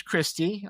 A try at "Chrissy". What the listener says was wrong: It's Chrissy. You said Christy,